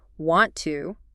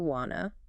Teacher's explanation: the tongue stays put, the hard consonant soften, and the vowels bleed together. Want to effortlessly glides into wanna.